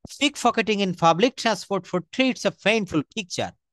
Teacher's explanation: আমরা প বলবো না, আমরা প্রত্যেকটা জায়গায় ফ উচ্চারণ করব